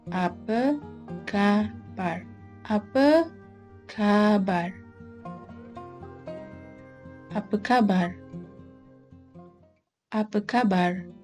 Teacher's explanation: you may remove the R sound here it is more natural not to pronounce the R letter at all